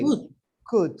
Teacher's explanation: But in could, try not to pronounce the L